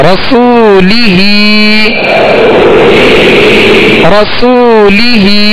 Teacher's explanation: سو، یہاں پہ واو مدہ ہے لہذا اس کو کھینچیں گے، ہا کے نیچے کھڑا زیر ہے، ہا کو بھی ایک الف کی مقدار یعنی 2 حرکت کے برابر کھینچ کر ادا کریں گے